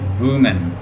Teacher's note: दोनों लिप्स जो हैं वो हमारे साथ हरकत कर रहे हैं डब्ल्यू बोलते हुए